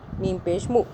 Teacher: मीम नहीं खींच रहा क्योंकि मीम के आगे वाव नहीं है